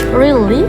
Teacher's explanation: kalimat really memiliki intonasi naik